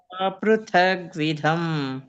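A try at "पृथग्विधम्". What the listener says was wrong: ಇಲ್ಲ ಗ್ಯಾಪ್ ಕೊಡ್ತಾ ಇದ್ದೀರಾ ನೀವು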